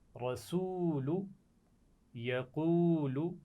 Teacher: واو ساکن سے پہلے پیش ہے تو اس لیے میں اس کو کھینچ کر پڑھ رہا ہوں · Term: واو مدہ